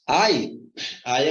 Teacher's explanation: você tem aqui uma vogal e uma semivogal você tem um ditongo decrescente